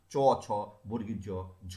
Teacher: জিহ্বার সম্মুখ ভাগ তালু সামনের দিকটা অগ্রভাগ স্পর্শ করছে, স্পর্শ করার ফলে শ্বাসবায়ু বাধা পাচ্ছে, এবং এই বাধাপ্রাপ্ত হয়ে যে ব্যঞ্জন উচ্চারিত হচ্ছে তাকে বলা হচ্ছে তালব্য ব্যঞ্জন।